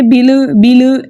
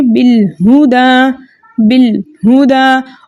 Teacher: لام کو اس کے مخرج میں روک کے پڑھنا ہے۔ زیر کو اگر آپ نے ای کے ساؤنڈ کے ساتھ پڑھی تو مطلب آپ نے زیر کو صحیح پڑھا، لیکن اگر آپ نے اے کے ساؤنڈ میں آپ کی آواز چلی گئی تو مطلب آپ کا زیر مجھول ہو گیا، صحیح ہے۔